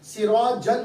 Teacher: جیم پر جو دو زبر ہے تو جیم آواز کس کی دے گا, اس کے بعد نون ساکن کی, تنوین آواز نون ساکن کی دے گا.